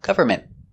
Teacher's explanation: The T is a stop T. Government. You don't really hear it.